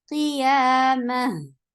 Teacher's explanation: When ha is with sukoon, it will get a rakhawa. Rakhawa is a flow of sound.